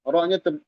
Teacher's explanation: Rohnya tebal karena dia sukun sebelumnya fathah.